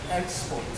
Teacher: export as a verb, we have the stress position on the second syllable